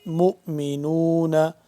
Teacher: میم کو ہم ملائیں گے اس حمزہ کے ساتھ چھوٹے حمزہ کے ساتھ تو چھوٹا سا جھٹکا بھی ہوگا